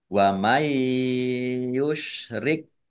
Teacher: nun sukun bertemu dengan huruf ya, itu bi gunah lagi, iya. ya mendengung ya, ditahan biar tampak dengungannya.